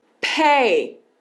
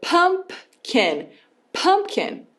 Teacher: os 2 lábios começam juntos e ó, você solta esse ar. Então esse é o som do P.